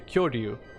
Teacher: Because like the Japanese, like ri, it's actually D. It sounds more like a D sound.